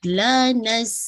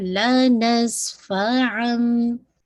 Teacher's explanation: سین پہ ویسل sound واضح کیجیے گا